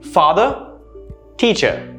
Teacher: notice how the last two letters are very quiet and very soft they use the schwa sound